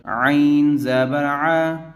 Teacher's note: عین کو گلے سے نکالیں گے زور دے کر